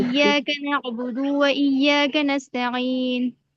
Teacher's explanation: इय्याक नअबुदु व इय्याक नस्तईन, नून पेश नू, यहाँ पर भी अब गोल आयत आ गई, वक्फ करेंगे तो नून पर जो पेश है वो खत्म हो जाएगा। नस्तईनु से नस्तईन हो जाएगा।